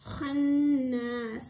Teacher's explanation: heavy letter மேல் தொண்டையில் சொல்லக்கூடியது